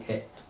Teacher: Pronounced A as in pet, but it is shorter and clipped with a smaller opening of the mouth.